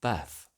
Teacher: Trap is later joined by bath in GenAm, General American, resulting in bath.